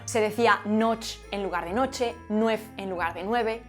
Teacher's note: la e se perdía casi de forma sistemática a final de palabra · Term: pocop extrema